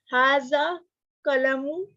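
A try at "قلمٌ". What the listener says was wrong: कलमुन. Sister, आपके जुबान से ऊन नहीं निकलता.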